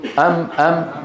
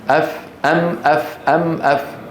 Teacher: الشفتين ام ام قولوا ام ام والواو من الشفتين او او الميم من الشفتين والفاء من باطن الشفه السفلى